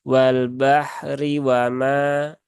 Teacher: Kalau di wasol, maka roknya kembali ke hukum awal. Rok yang berharokat kasroh berarti dia tipis.